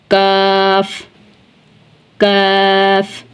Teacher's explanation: पढ़ा जाएगा जुबान की जड़ और तालू के नरम हिस्से से काफ बारीक पढ़ा जाएगा जुबान की जड़ और तालू के सख्त हिस्से से